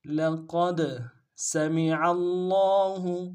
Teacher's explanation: لقد سمع اللہ، سین کی سیٹی باریک ہوگی، میم کو نون سے ادا کریں گے، عین کو گہرائی سے ادا کرتے ہوئے لام کے سامنے لانا ہے